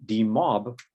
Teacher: in d-mob the stress is on the second syllable